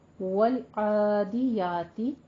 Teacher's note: عین کے اوپر بھی کھڑی زبر ہے، فتح قائمہ ہے، یا کے اوپر بھی فتح قائمہ ہے، دونوں کو دو حرکتوں برابر لمبا کر کے پڑھنا ہے